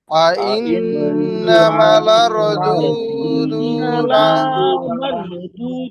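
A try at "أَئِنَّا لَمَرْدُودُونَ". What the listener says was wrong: এই যে ইন্না ইন্না টানতেছেন, এটা কি বুঝতেছেন? একটু টান হচ্ছে ভাই, টান হচ্ছে না। ইন্নামা আপনি বলতেছেন ইন্না লামার, ইন্না টান আছে।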